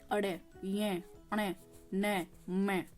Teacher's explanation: जब आप इनको बोलोगे आपको कैसा फील होगा जैसे आप नाक से बोल रहे हो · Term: नासिक व्यंजन